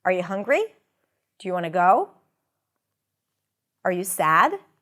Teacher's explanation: so we start low and we go up